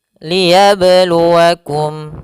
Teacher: pada huruf ba sukun ada namanya bacaan qalqalah, yaitu bacaan yang memantul. Qalqalah artinya dari kata qalqala yuqalqilu qalqalatan bermakna al-ittirab, pantulan.